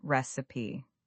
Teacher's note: Many learners put the stress on the second syllable, recip, but the correct pronunciation has the stress on the first syllable